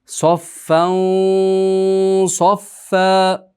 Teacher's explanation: Mana shu yerda tanvinimiz yo'g'on harfga kirayotganda yo'g'on kiradi.